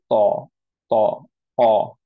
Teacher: Back of the টাংটা elevated, larger portion touch করছে, এন্ড হচ্ছে অ sound আসছে, আ না। অ সাউন্ড করতে গেলেই আমাদের যেটা হয় ইউজুয়ালি, মুখটা রাউন্ড হয়ে যায়, লিপটা রাউন্ড হয়ে যায়।